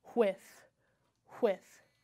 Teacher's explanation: The first sound I hear, absolutely strong burst of air. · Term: digraph